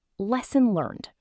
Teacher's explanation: with the final D softened, almost swallowed in casual speech